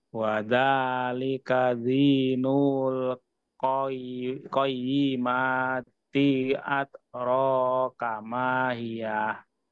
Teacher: Ro-nya yang panjang Pak, bukan kaknya.